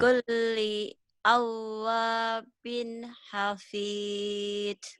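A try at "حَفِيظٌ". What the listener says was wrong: Jangan hafid. Hafiz. Hafiz Quran. Bukan hafid Quran. Orang Sunda kan hafid. Hafidoh pada hafizoh. kalau zoh tuh agak susah juga. Padahal bukan hafid, hafiz harusnya ya. Zoh.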